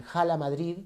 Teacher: jala Madrid tiene esa h con exhalación